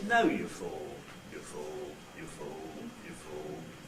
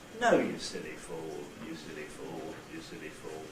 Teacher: If we have some tail syllables, and you can see I've got the two syllables you fool, then what happens is that the nucleus itself starts high in pitch, falls to low, and then levels out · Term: high fall